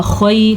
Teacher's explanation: لِأَنفُسِكُم مِّن خَيْرٍ تَجِدُوهُ، خیر، خا زبر یا، خی، خا کو پر پڑھنا ہے اور یہ یا لین ہے